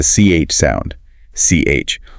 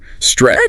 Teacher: it finishes with the CH sound. CH, like a sharp burst of air.